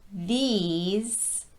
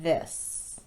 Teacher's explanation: The tongue is very tense and high for the E sound, but it's more relaxed and a bit lower for the I sound. Conversely, for the word these, your tongue needs to be high in the mouth and very tense, because this word does use that long E sound.